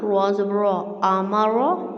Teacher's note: حمزہ زبر آ، میم زبر ما، را زبر را، آمارا، ٹھیک ہے. را کو میں اس لیے پور پڑھ رہی ہوں، موٹا پڑھ رہی ہوں کیونکہ اس پہ زبر ہے. زیر ہوگی تو ہم را کو باریک پڑھیں گے، لیکن پیش پہ بھی ہم لوگ را کو موٹا پڑھیں گے.